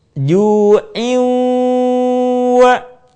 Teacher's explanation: suara kita sebagiannya masuk ke rongga hidung